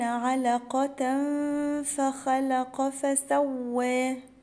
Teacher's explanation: علقة هنا تنوين وراه حرف الفاء هيبقى فيها إخفاء